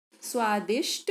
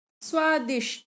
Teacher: कभी-कभी उच्चारण की सुविधा के लिए महाप्राण ध्वनि को अल्पप्राण कर देते हैं